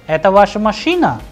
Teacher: the pattern at the end rises at a washer machine ax because I'm asking a question so at the end the pitch of the sound is rising